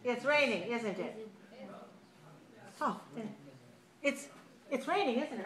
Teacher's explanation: you use falling intonation when you are fairly sure that it's raining